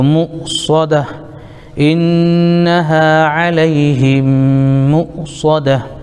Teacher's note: یہ گولتا آیت کی وجہ سے ساکن ہو جائے گا، ہائے ساکنہ ہو جائے گا ، تو مو صدہ، انہا علیہم مؤصدہ، فا کے نیچے زیر